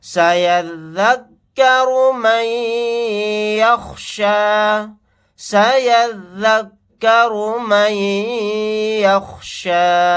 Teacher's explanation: نون ساکن کے بعد یا آ گیا تو یہاں پر ادغام غنہ کا قاعدہ ہوگا.